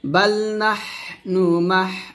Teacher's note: নাহনু মাহ বাতাস বের করবেন